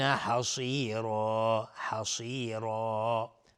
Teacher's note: صاد از حروف استعلاء غلیظ تلفظ میشه